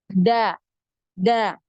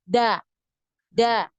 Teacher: huruf Dal sendiri itu tidak punya aliran nafas ya makanya dia termasuk huruf yang kuat karena tidak ada aliran nafasnya